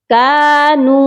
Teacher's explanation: نون کو لمبا کر کے پڑھا جائے گا کیونکہ نون کے ساتھ واو مدہ ہے